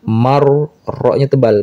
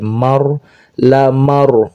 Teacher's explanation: Inna lamar, huruf ro dibaca tebal. Kenapa? Karena ro sukun sebelumnya ada mim, sebelumnya ada huruf yang berharkat fathah.